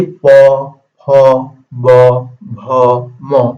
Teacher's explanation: এই যে প, হ, ব, ভ, ম আমরা যে উচ্চারণ করতেছি এই দুই ঠোঁটের সাহায্যে এই উপরের ঠোঁটটাকে বলা হয় ওষ্ঠ আর নিচের ঠোঁটটাকে বলা হয় অধর, ঠিক আছে।